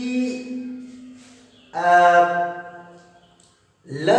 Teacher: अब आपके दिमाग में उठ रहा होगा कि ये पार्श्विक वर्ण कौन सी बला है, तो आपको बता दूं कि ल को पार्श्विक वर्ण इसलिए कहते हैं क्योंकि इसके उच्चारण में हवा जीभ के पार्श्व से, जीभ की बगल से निकलती है, इसलिए इसे पार्श्विक वर्ण कहते हैं।